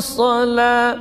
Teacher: Tapi kalau Hafs ya Imam Hafs membacanya tipis. Sala tipis panjang 2 harakat. Tidak boleh ditebalkan. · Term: lam tipis